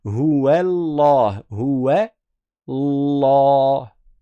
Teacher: Non, il faut dire ouais, huwa. Et après, quand tu arrives au lem, c'est là où tu rends la lettre emphatique.